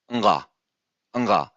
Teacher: And we usually, when we will chant, we usually chant a letter G, just denoting that this is actually a nasal velar sound